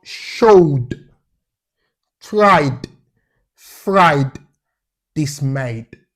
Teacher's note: all of the past tense markers should be pronounced as D.